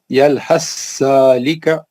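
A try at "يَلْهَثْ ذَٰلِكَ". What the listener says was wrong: ہاں ایک بار اور پڑھ لیجیے، سا نہیں نکلے گا۔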